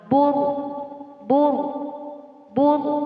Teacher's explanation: Ro di sini dibaca tebal karena didahului dengan harokat dhammah